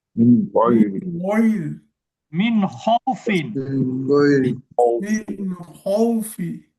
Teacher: নুন সাকিনের অক্ষর আসলে ওই নুনটাকে গুন্না ছাড়াই স্পষ্ট করে পড়তে হচ্ছে। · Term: ইজহার